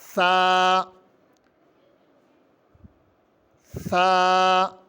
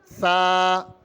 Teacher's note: اس میں سین کی آواز کی آمیزش نہ ہو۔ سین کی آواز میں سیٹی ہوتی ہے اور ثا کی آواز نرم ہوتی ہے